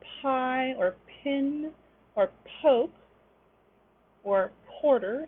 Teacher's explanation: the aspirated p the p with a little puff of air · you can notice a little aspiration and these tend to occur at the beginning of a stressed syllable